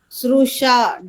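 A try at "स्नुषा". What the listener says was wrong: Not Ru, Na.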